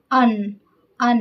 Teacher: अन यानी नाक से ध्वनि निकाल निकाल कर बोल रहे हैं।